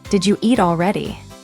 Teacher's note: Did you hear how did you became didja?